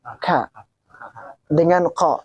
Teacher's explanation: Ka ada di aksol lisan namanya, aksol lisan bagian terdalam. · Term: Kaf